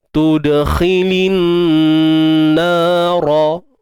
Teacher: Kha baris bawah khi, lin, alif lam syamsiyah kat sini, tuan-tuan dan puan, alif lam syamsiyah. Kemudian terdapat nun bersabdu kan. Dengung dua harakat, wajibul gunnah.